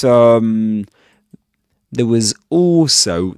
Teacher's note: Okay, so this is there was also there we can see that he doesn't say there, but there was also the z sound at the end of was links that word with the word also